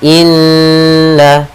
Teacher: cara membacanya adalah kita menahan suara nnya dua harakat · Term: gunah, gunnah